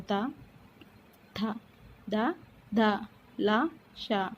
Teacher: ఇవి మనం పలికేటప్పుడు దంతాలు నాలుక చివర అనేది దంతాలకు టచ్ అవుతుంది కాబట్టి దంతాల సహాయంతో పలుకుతాం కాబట్టి దంత్యములు అంటారు.